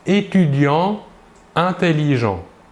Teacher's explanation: Étudiant, pourtant ici, finit par un T et l'adjectif commence par un I, mais nous ne réaliserons pas la liaison. Elle est interdite.